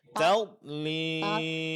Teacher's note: kedua sisi lidah disentuhkan dan ditempelkan pada dinding gigi geraham atas, dan begitu juga ujungnya ditempelkan pada gusi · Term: huruf dad